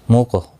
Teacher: قاف ساکن پر قلقلہ ہوگا. قاف مستعلیہ بھی ہے، پر پڑھا جائے گا. جب بھی حروف قلقلہ 5 ہیں، جب بھی یہ ساکن ہوتے ہیں یعنی جزم ہوتی ہے ان کے اوپر، تو ان کے اوپر قلقلہ ہوتا ہے.